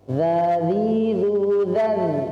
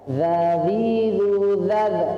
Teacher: Dan dia huruf ini adalah bukan huruf qalqalah, teman-teman sekalian. Karena dia bukan huruf qalqalah, maka tidak boleh dipantulkan suara kita